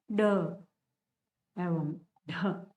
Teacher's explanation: इनका जब उच्चारण किया जाता है तब हमारी जीवा जो है वो उछल करके वापस आएगी। एक बार उछलेगी जोरदार और वापस आएगी, उछल कर आएगी, इसीलिए उछल कर आती है, इसीलिए इसको उत्सिप्त कहते हैं।